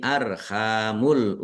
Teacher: ha fathah alif mad thobi'i panjang dua harakat